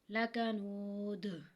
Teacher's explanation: لربه لکنود، اب آیت کے اینڈ پہ آ رہا ہے حروف قلقلہ میں سے یہاں پہ قلقلہ ہوگا، یعنی کہ جو حروف میں جب ادائیگی ہوگی تو یہاں پہ جنبش سی پیدا ہوگی